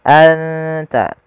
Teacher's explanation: Cara membacanya adalah suara nunnya disamarkan ke huruf ta, anta. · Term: ikhfa